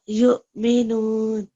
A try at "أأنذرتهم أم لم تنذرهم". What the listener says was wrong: Again, we just need to make sure we're making a nasal. أنذرتهم أنذرتهم أم لم تنذرهم. Okay, you need to make your nasal sound there.